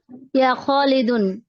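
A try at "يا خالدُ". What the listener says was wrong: Wait wait, ইয়া, ইয়া শব্দের পরে সবসময় এক পেশ হবে। ইয়া খালিদু, এই যে উপরে ইয়া রাশিদু, দুই পেশ না, কয় পেশ হবে? এক পেশ।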